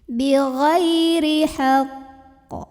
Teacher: Bacanya ini beda dengan yang enggak ada tasydid. Kalau yang ada tasydid itu pantulannya tuh jadi kayak telat dulu gitu untuk menyempurnakan tasydidnya. Jadi ditahan dulu. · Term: qalqalah akbar